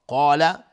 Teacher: قاف از حروف استعلاء غلیظ تلفظ میشه، الف هم تابع قاف غلیظ